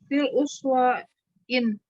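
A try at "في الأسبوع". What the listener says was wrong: Ah, nggak pakai tanwin, Bu, karena ada al. Fil usbu'i sab'atu.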